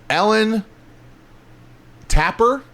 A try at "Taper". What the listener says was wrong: There's only one P. That makes it a long A.